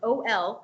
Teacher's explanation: the OL sound, OL, creates a nice rounded lip, but the L allows your tongue to relax on the bottom of your mouth. So you can really create a nice open space.